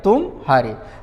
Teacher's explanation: म ध्वनि और ह ध्वनि के बीच में जो विराम है वो थोड़ा बड़ा है इसकी तुलना में, इसलिए इसके अर्थ में भिन्नता आ रही है कि यू डिफीट, तुम हारे, तुम हार गए, ये वाली बात आ रही है ना। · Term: संगम